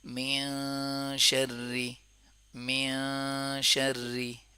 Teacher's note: یہ نون ساکن ہم ادا کر رہے ہیں، لیکن نون ساکن کو ناک سے ادا کر رہے ہیں کیونکہ آگے شین ادا کرنا ہے